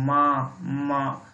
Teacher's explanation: आपके नाक से स्वर भी निकल रहा है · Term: नासिका